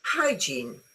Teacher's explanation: This word has two syllables and the stress is on the first syllable.